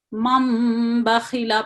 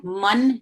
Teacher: یہ نون ساکن کی آواز جو ہے وہ میم میں بدل جائے گی, اور اس کو ہم مم بخیلا پڑھیں گے, من نہیں پڑھنا, مم پڑھیں گے.